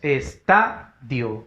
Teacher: Tenemos estadio, fuerza de voz en la ta